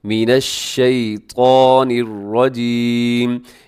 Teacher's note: اب اس شیطان کے اندر جو ایک حرف ہے، حرف طا، اسے آپ نے موٹا پڑھنا ہے، اسے کبھی بھی باریک نہ کیجیے گا، یہ موٹے حروف میں ہے